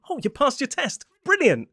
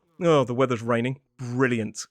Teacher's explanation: Listen to that dead flat tone of sarcasm.